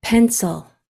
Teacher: there is actually a schwa in there before the L